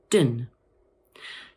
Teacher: So this one might seem a little bit easy, but a lot of people make the mistake of pronouncing the letter O as an O sound, when in fact, in the first part of the word, the O is pronounced A, like this, lun. And in the second part of the word, the O is pronounced as a schwa